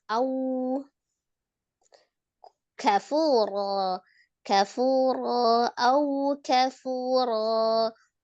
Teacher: sempurnakan waw sukunnya waw. Majukan bibirnya ya. Au kafura au kafura, punya mad tabi'i waw, kemudian ronnya kembali mad iwad dia dibaca ron, dibaca ro 2 harakat.